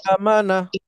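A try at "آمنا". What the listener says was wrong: না, আতে টান হবে।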